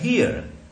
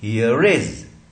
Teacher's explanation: अब ये रिज बन गया, हियर इज, ये अ और ई के बीच में र आ गया। यहां आखिरी में था, इस अ के बाद में ई के बाद, तो इसको हम उच्चारण नहीं कर रहे थे, मगर आगे अगर वॉवेल उसको मिल गया तो पोस्ट इंटरवोकेलिक बन गया पोस्ट वोकेलिक की जगह, तो वो हियर रेज।